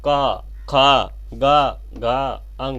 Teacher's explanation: क वर्ग है, इसका उच्चारण जो होगा कंठ से होगा।